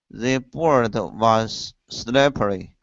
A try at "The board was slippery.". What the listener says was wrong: Okay, watch the sound after the D. Instead of board was, it's board was. Connect those sounds.